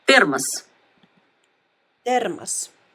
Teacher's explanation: you can clearly hear that the O letter is pronounced A